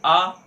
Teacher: जो ध्वनि निकल रही है वह सीधे कंठ से निकल रही है और कोई अंग उस पे स्पर्श नहीं कर रहा है, इसलिए उसे क्या कहा गया?